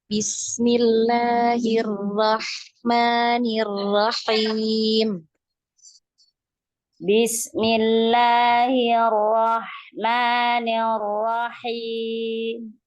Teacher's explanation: ini ada tasdid maka naik ya suaranya naik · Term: naber